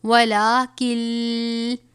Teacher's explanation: اب یہاں پہ دیکھیں کل لفظ ولاکن ہے، لیکن نون ساکن کے بعد حروف یرملون میں سے یہ لام مشدد ہے، تو ہم اس کو نون کو لام سے ملا دیں گے. کن نہیں پڑھیں گے، کل پڑھیں گے. · لام کے اوپر کھڑا زبر ہے، 1 الف کے برابر پڑھا جائے گا